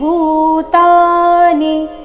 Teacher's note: ಭೂ ಮಹಾಪ್ರಾಣ ದೀರ್ಘ, ಚರಣದ ಕೊನೆಗೆ ನೀ ರಸ್ವ ಇದೆ.